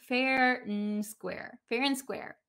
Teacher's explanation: So a lot of the times when we have and in American English, we tend to just say the n sound. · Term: just the N sound